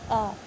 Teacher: आ को आ बोल के देखिए, आ। जीवा का कोई काम नहीं है इसमें, इसे गले से बोला जा रहा है · जब आप आ बोलते हैं तो आपकी जीवा किसी भी मुख के भाग को स्पर्श नहीं करती है। आप धीरे से आ बोलिए और अपने गले पर हाथ रखिए, कंठ पर, तो आपको समझ आएगा कि इस वर्ण को हम गले से बोल रहे हैं।